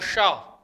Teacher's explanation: इस शा का जो उच्चारण स्थान है वो मूर्धा है, इसलिए इस शा को हम किस नाम से जानते हैं? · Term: मूर्धन्य शा